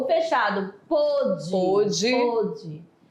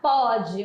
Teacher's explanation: Um é fechado, outro o som aberto. Mais aberto.